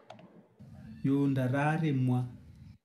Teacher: I only hear two syllables here so no initial e